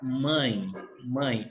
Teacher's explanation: Agora, nós temos aqui o ditongo nasal, aquele que o ar não sai exclusivamente pela boca. Ele tem uma parcela da saída aí pelo nariz. E aí nós chamamos ele de nasal, porque aí são os sons que aparecem de forma nasalada.